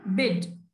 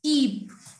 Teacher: एक में बिड, okay, short sound देता है, एक तरफ है कीप. ई को हम केंच के पढ़ रहे हैं.